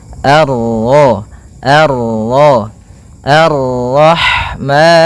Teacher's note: bertemu dengan huruf ra yang berharakat tasydid, maka ra-nya kita baca dengan tafkhim